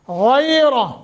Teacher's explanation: غیرہ، غین کو موٹا اور نرمی کے ساتھ، محبت کے ساتھ، جیسے آپ اپنے بیٹوں کو پیار کرتے ہو، بوسہ دیتے ہو، غیرہ ایسا، اور 1 سیکنڈ کی مد بھی کریں گے، یہ حروف لین بن رہا ہے۔